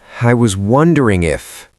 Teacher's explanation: Ooh, that was aggressive. You stressed wondering.